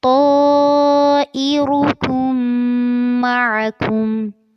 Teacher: اور کم کے ساتھ آپ جب کاف کو اگلے میم کے ساتھ ملائیں گے جس کے اوپر تشدید ہے تو غنہ کرنا ہے